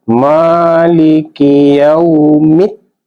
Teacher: Karena ada alif lam bertemu dengan salah satu huruf samsiah, maka alif lamnya tidak dibaca. Ini langsung pada bunyi dal. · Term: alif lam samsiah